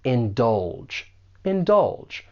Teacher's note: The stress is on that second syllable, and that G has more of a J sound.